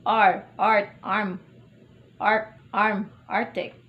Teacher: The low central vowel. Initial. R, art, arm, arc, arm, arctic.